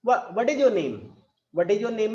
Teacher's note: व्हाट इज योर नेम में आपका falling tone होता है.